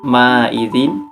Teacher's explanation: Untuk yang ayat kedua di sini ada untuk ayat kedua di sini ada ma'izin, yaitu idhar sebab huruf zal berharakat kasroh tanwin bertemu huruf ka, dibaca jelas dan tidak berdengung